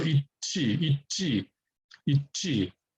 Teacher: When you have this kind of a unenunciated T sound at the end of one syllable, and then an unaspirated consonant at the beginning of the next syllable, the unaspirated consonant becomes kind of aspirated. So it's eat G instead of eat G.